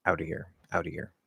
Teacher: So the most common, most likely way that we're going to pronounce this phrase out of here is either A as out of here with that H, but the flapping D, outa, or maybe dropping the H out of here, out of here. As I said, especially in very fast speech, we'll probably drop that H